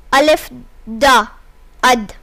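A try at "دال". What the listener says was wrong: Not da, dal.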